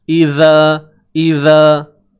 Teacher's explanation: Idza huruf zal keluarkan hujung lidah, tuan-tuan. Keluarkan sikit saja hujung lidah. Cukup keluar aja.